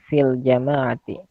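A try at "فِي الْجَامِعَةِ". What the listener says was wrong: Ya, fil jami'ati bukan jamaah ya. Fil jami'ati ya.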